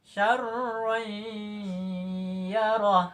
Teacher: Ada baris 2 di atas, namanya tanwin. Sesudah tanwin itu ada huruf ya. Ya itu adalah salah satu huruf idgham bi gunnah, maka dibaca dengung.